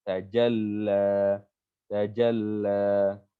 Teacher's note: fungsi tasydid menahan suara kita 1 detik. Ya, keangkat suara kita 1 detik.